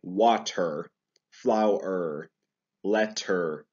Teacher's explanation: in american english you really have to pronounce the r here